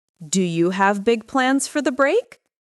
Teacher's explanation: Notice the rising intonation at the end